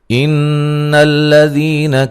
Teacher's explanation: نون مشدد پہ غنہ ضروری ہے